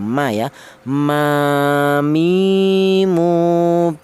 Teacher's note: huruf berasal di kedua bibir yang rapat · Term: huruf mim